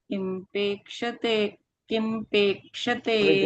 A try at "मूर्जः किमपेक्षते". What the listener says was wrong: ऊर्जः किम अपेक्षते, दो शब्द है ऊर्जः किम अपेक्षते।